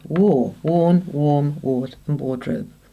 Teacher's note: the AR usually has an R sound, but after the W it has an OR sound